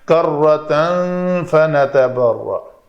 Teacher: اگر ملا کر پڑھنا ہے تنوین کے بعد فا ہے تو اخفا کریں گے